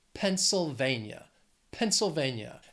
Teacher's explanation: has four syllables stress is on that third syllable